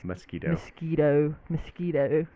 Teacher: You kind of just miss out the O and just say m.